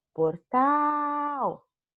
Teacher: Portal é oxítona, pois o tal, ó, portal, é a sílaba mais forte, sendo a sílaba tônica.